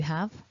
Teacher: our basic form have ends in a v sound, which is a voiced consonant. So even though we need to write that letter E, we're not saying it.